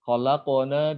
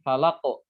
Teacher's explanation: Karena dia bunyi qalqalahnya lebih kuat, ya, lebih jelas. Terdengar lebih jelas, lebih kuat dibandingkan kalau seandainya huruf qalqalahnya ada di tengah ayat, ya, di tengah kata ya. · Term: qalqalah kubro